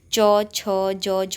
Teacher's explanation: ठीक है, उच्चारण के स्थान पर ही तालव्य होते हैं, क्योंकि जब हम इनको उच्चारित करते हैं तो हमारी जो जीभ है वो हमारे मुंह के ऊपरी भाग पर टच होती है